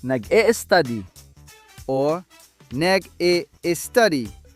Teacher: Filipinos often add an I or E sound to S clusters.